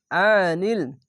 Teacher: আইনটিকে মোটা করে গলা চিপে পড়বেন